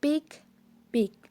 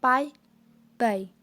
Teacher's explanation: The lips are closed, then you stop the air and it's also aspirated.